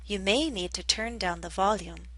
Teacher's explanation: I stressed the verb turn